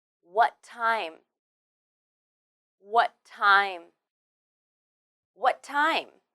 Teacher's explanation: Here, what ends with the t sound, and time begins with the t sound too. When you say them together, you only need to say one t sound